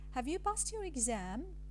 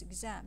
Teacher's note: the tonic syllable is the second syllable of exam. It's exam.